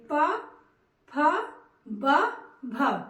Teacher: जब भी आप इनका उच्चारण करेंगे दोनों होठ आपस में मिलेंगे, प, फ, ब, भ, यानी कि इनका उच्चारण स्थान ओष्ठ है।